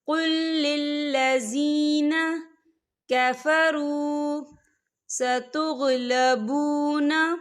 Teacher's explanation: قل للذین، یہ دیکھیں قل للذی، یہاں پر یا مدہ ہو رہا ہے، یا ساکن ہے، یا ساکن سے پہلے زیر ہے، تو ہم اسے 2 یا 3 حرکت کے برابر کھینچے پڑھیں گے۔